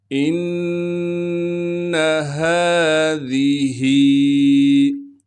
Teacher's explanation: ذال کو نرم کر کے باریک کر کے پڑھنا ہے، یعنی دونوں دانتوں کے درمیان ہلکی سی زبان کو لائیں گے تو ذال نرم ادا ہوگا۔